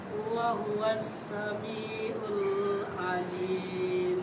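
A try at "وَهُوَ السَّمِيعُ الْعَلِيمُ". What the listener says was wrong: Jangan samiul, jangan diberhenti, jangan diapakan. Samiul, jangan itu. Samiul alim.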